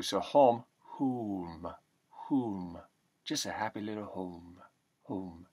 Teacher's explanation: the O sound becomes almost an oo